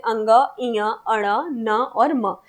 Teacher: जब हम बोलते हैं तो आपकी जो ध्वनि होती है वो मुख के साथ-साथ नाक से भी निकलती है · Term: नासिक वर्ण